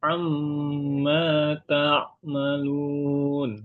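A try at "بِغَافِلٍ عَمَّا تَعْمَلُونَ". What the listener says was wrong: Ingat, idhar dibaca jelas, jadi nggak perlu ditahan Pak ya. Oke, jadi gini Pak, dibacanya jelas dan nggak perlu ditahan. Jadi bukan bighafilin amma ta'malun. Bukan, tapi bighafilin amma ta'malun.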